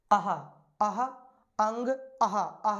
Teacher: विसर्ग जब हम बोलते हैं तो विसर्ग के साथ हा ध्वनि निकलती है। यदि विसर्ग का उच्चारण कंठ से होता है तो हमारा हा का उच्चारण भी हमारा कंठ से होता है।